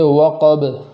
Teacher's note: اس کلمے کے اندر قاف کو پور پڑھیں گے اور با میں وقف کی حالت میں قلقلہ کریں گے، اس لیے کہ اس کے اوپر جزم آ جائے گا تو آواز کو لوٹائیں گے، جیسے وقب، وقب، ایسے نہیں پڑھیں گے جیسے وقب، وقب، بلکہ ایسے پڑھیں گے وقب۔ · آگے ہے وقب، تو اس کلمے کے اندر قاف کو پور پڑھیں گے اور با میں وقف کی حالت میں قلقلہ کریں گے، اس لیے کہ اس کے اوپر جزم آ جائے گا تو آواز کو لوٹائیں گے